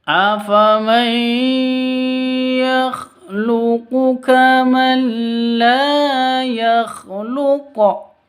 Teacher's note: Tan non mati bertemu dengan lam. Cara bacanya masuk ke lam tanpa dengung karena idgham bila gunnah.